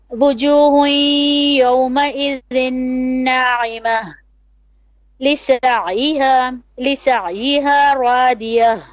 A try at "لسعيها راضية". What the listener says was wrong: Ra more heavy.